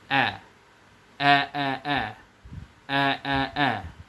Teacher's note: makharijul huruf hamzah itu dikeluarkan dari tenggorokan paling bawah